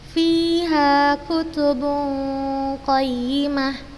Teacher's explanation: Jadi kita tidak terlalu jelas membaca huruf nunnya, jadi kita samarkan, kita masukkan dia ke huruf setelahnya, kita samarkan. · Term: disamarkan dengan gunnah